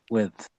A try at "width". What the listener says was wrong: your D is a bit too quiet I would say